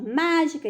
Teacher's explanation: E a mais forte foi na antepenúltima. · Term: proparoxítona